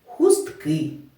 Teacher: наголос стоїть на останній голосний и